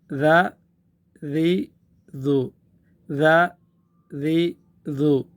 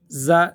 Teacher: زا جو را کے بعد ہے وہ زا میں سیٹی کی آواز ہے. اس ذال میں سیٹی کی آواز بالکل نہیں آنی ہے. اس کی صورت یہ ہے کہ زبان کا جو سرا ہے اس کو ہم اوپر کے جو دانت ہے سامنے کے دانتوں کے جو بالکل سرا ہے اس کے نیچے لگا دیں گے.